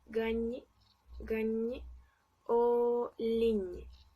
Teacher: Este fonema es un fonema palatal y bueno, la lengua se posiciona muy pegada al paladar e incluso llega a bloquear la salida del aire, entonces el aire sale un poco por la nariz